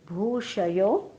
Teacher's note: भूषयो मधला भू दीर्घ आहे